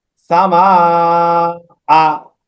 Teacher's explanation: একই শব্দের ভিতরে মদের হরফের পরে হামজা হলে মধ্যে মুত্তাসিল হবে, চার আলিফ টেনে পড়তে হবে।